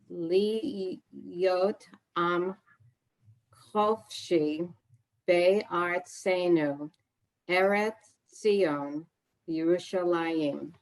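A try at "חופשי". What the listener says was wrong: Notice the second to last line, third word in. pronounced it chofshi, but it looks like chafshi. Notice the vowel underneath is bigger than, doesn't look that much bigger than a one above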